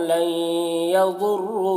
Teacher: نون ساکن کے بعد یا ہے حروف یومن میں سے تو ادغام ناقص ہوگا. یضر ضاد کو پر پڑھیں گے اور را کو بھی یہاں پر پر پڑھیں گے.